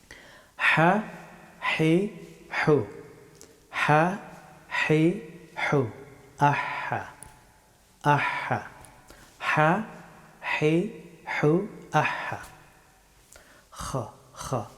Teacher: হা হরফটি উচ্চারিত হয় গলার মধ্যস্থল থেকে